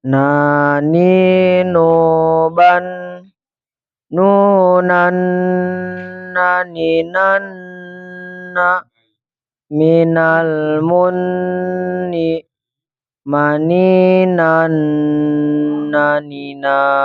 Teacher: Ingat, nun bertasdid, tahan yang lama ya, jangan buru-buru ya. Hukum nun tasdid ditahan yang lama.